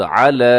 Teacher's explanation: अला लाम के ऊपर खड़ा ज़बर, इसे लंबा कीजिएगा